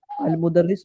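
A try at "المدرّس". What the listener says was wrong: अच्छा, मुदर्रिस, मुदस्सिर सुनाई दिया मुझे। ठीक है, बिल्कुल सही है, मुदर्रिस।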